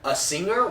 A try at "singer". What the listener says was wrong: You said singer? Like, dude, you're going hard on the G-E-R there. You gotta be careful with that. Singer.